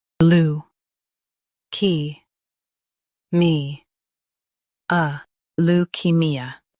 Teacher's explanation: Emphasize key and soften me